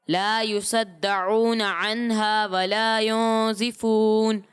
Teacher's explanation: لیکن آپ نے بیٹا صاد کو باریک پڑھا. ٹھیک ہے لا يصدعون نہیں لا يصدعون.